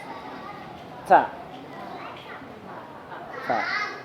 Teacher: Huruf ta itu berarti ujung lidah kita ketemu dengan belakang gigi atas